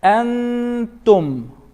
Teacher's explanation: So on Nun Sākinah right here, there is this phenomenon called ikhfā, hiding of Nun Sākinah that's happening